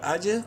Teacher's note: قلقلہ ہوگا، جیم حروف قلقلہ میں سے ہے اور ساکن ہے